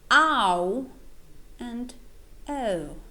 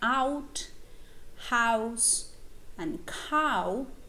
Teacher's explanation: they're called back diphthongs because the second element they have in common is the vowel o the back vowel